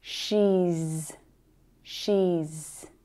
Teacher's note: vowel sounds are all voiced sounds, so the sound that follows is z